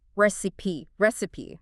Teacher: three syllables stress on the first